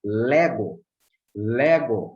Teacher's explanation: Lego tem o som mais forte no épsilon